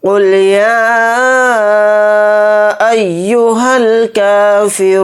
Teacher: یا کو ہم کھینچ کر پڑھیں گے کیونکہ اس پر مد منفصل ہے